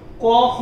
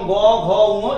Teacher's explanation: ক খ এগুলো হচ্ছে অঘোষ এবং গ ঘ ঙ এগুলো হচ্ছে ঘোষ